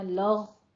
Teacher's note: और लग़वन में गैन को आपने पुर पढ़ना है, लग़ु नहीं कहना, कलकला नहीं करना, लग़ ये ऐसे स्टॉप करनी है आवाज। लग़वन इजहार हल्की करना है।